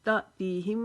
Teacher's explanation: यहाँ पर आगे मीम मुशद्दद है, इसके लिए हम एक अलिफ के जितना यहाँ पर गुन्ना करेंगे। · ता को झटके के साथ पढ़ेंगे क्योंकि ये हमज़ा जो है साकिन हो गया, इसके ऊपर जज़म आ गया है। ये हमेशा झटके के साथ पढ़ा जाएगा जब इसके ऊपर जज़म आ जाएगी।